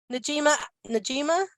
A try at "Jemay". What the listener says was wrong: it's Jemay. That was a great effort, but it's Jemay. The N is silent, so it's just